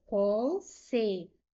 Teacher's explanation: Sílaba mais forte é esta penúltima. · A penúltima sílaba é mais forte. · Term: paroxítona